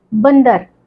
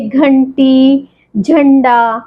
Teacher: इन शब्दों को बोलते वक्त हमारे गले से और नाक से दोनों से आवाज आई है मतलब गले में हम हवा को रोकने हैं और नाक से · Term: अनुस्वार